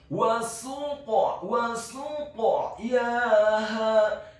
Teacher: Kata wa suqyaha, huruf waw-nya dibaca fathah 1 harokat, huruf sin-nya dibaca dhammah 1 harokat, huruf qaf-nya dibaca tafkhim tebal sukun dan wajib untuk diqalqalakan atau dipantulkan